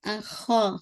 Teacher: خا کو پورا فل آف ماؤتھ کے ساتھ الف بھی ہیوی ہو جائے گا